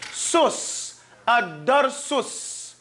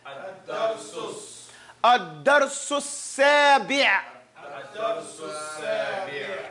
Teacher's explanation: the seen from su goes to a seen mushaddad. So you're saying sus.